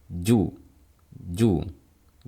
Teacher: saat kita lafalkan keluarnya suara dan majunya kedua bibir kita lakukan bersamaan. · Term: asyiddah